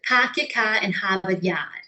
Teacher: vestiges of the dropped R in cities and regions that had close contact with England